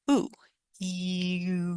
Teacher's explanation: if you try e and move it back you might notice that it's getting closer to the sound ooh e like that so give it a try pick a sound